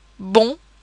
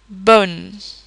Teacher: we say bon, which is a very round and nasal sound, but we would say bone, which is not nasal